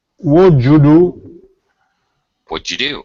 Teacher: I'd almost like to say it's more like J, almost a D blended with a J sound.